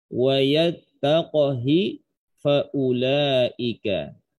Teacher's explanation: Imam Hafs membaca lafaz wa yattaqhi dengan mensukunkan huruf qaf dan memperpendek harokat ha menjadi setengah harokat dengan ikhtilas.